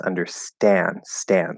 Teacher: we're not going to push uh the full air out for the the T sound